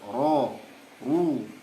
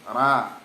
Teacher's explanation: Ketika fathah atau dhammah dia tebal, ro, ru, ya, nggak boleh ra kecuali di qiraat yang lain.